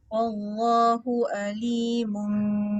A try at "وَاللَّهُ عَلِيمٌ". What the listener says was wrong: Masuk sikit lagi. Wallahu alimun. Ain.